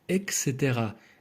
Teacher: все більше людей вимовляють екстера зі звуком к а не ТС і не усвідомлюють що правильно читається по-іншому дуже багато людей і